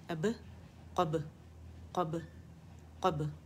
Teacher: कलकला होगा खूबसूरत बारीक से बा के ऊपर, दोनों होंठों के गीले हिस्से आपस में मिला के फ़ौरन से इसे जुदा कर लेंगे